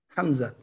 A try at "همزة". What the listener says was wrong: ليس حمزة. حمزة ليس حمزة رضي الله عن حمزة أسد الإسلام. همزة همزة. لا أخي، اسمها همزة وليس حمزة. همزة. أنا المترجم منذ قليل ما أسمعه إلا يقول حمزة حمزة حمزة. But this is همزة.